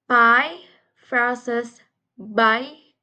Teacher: P is voiceless and P is voiced. Both consonants are bilabial plosives, meaning they are made with both lips